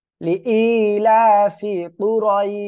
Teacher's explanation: লিনে আরজি হবে, তিন আলিফ টেনে পড়বো আমরা